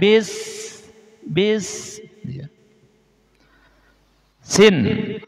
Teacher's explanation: Sekali lagi, rakhwah ini adalah suara berja berjalan. Jadi, ketika mengucapkan huruf sin ini tidak boleh syiddah. Arti syiddah itu langsung nahan. Ah, tapi ketika ngucapinnya itu ada suara berjalannya.